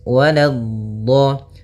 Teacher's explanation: Waladdo, la-nya jangan sampai tebal, jangan waladdo, tapi la-nya tipis. Waladdo. Baru di dotnya yang tebal.